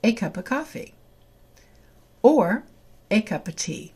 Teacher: So we have a cup ending in a P sound, which is a consonant, followed by a, which is a vowel sound. The P will move to the A, and the real pronunciation of a cup of coffee is a cup of coffee or a cup of tea.